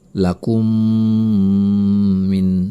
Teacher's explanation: mim mati bertemu dengan mim bertasydid maka ini juga idgham syafawi atau Mimi maka cara membacanya adalah dengan menahan bunyi mim disertai